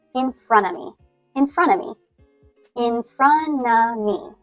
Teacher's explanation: So you kind of drop the T at the end of front, and you don't pronounce the V sound at the end of, but drop that as well.